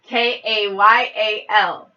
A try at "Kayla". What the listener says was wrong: You said A-L.